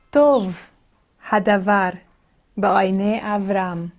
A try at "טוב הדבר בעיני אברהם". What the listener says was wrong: That one was nice and slow. I like that.